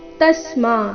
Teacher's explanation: ತ ಮೇಲೆ ಆಘಾತ ಮ ದೀರ್ಘ